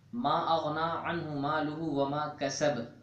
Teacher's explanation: اگر با آیت کے آخر میں ہو اور اس پر وقف ہو رہا ہو تو یہ قلقلہ یہاں قلقلہ زیادہ کیا جاتا ہے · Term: قلقلہ کبریٰ